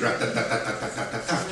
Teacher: it's syllable-timed English, and there are 400 million people who speak like that